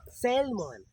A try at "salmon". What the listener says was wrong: Samon na, oy. Samon. Samon na gina. Silent L.